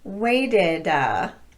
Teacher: notice that I'm tapping the T in weighted that's because the t is falling between vowel sounds and the unstressed syllable